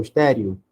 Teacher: O E tem um som de I, então ele vai ser uma semivogal.